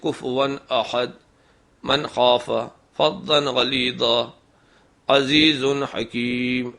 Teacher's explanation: اگر تنوین یا نون ساکن کے بعد حروف علقی آ جائیں تو وہاں تنوین اور نون کی آواز اصلی اور صاف رہے گی، غنہ نہیں کریں گے